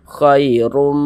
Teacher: huruf ra memiliki tanda baca dhom yang kita tebalkan